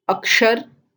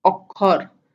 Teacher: In all of these examples, you can see the Sanskrit word has the sh sound, which is changed to the k sound in Bengali